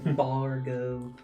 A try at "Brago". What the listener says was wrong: That's what changed. The R changed the placement.